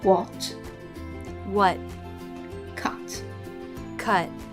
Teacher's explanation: in American English, they tend to drop the T in the final position.